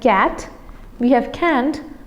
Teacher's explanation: in can't, the a vowel becomes nasalized